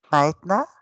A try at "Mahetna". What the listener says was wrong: Normalement, il faut souffler le H, mais ça va. Mahetna.